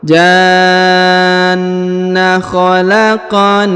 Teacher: Huruf qaf dipantulkan karena berharokat sukun.